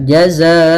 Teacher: Kita masukkan tanwinnya dengan menahan gunnahnya. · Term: bi gunnah